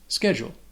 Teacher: So this word has 2 syllables, and it can be confusing because of that CH. It doesn't have a ch sound. It has a k sound, like a K sound.